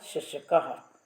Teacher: तदा जिह्वायाः मध्यः, जिह्वा का थोड़ा सा मध्य भाग तालु को थोड़ा सा स्पर्श करता है ना। जिह्वायाः मध्यः तालुम किंचित स्पृशति, जिह्वा का जो मध्य है वो तालु को थोड़ा सा स्पर्श करता है। श आप बोल के देखिए, यथा शशकः इति शब्दे अतः अहम तालव्या, क्योंकि श बोलने पर जीभ जो है तालु से थोड़ी सी स्पर्श होती है, इसलिए इसको तालव्या कहते हैं।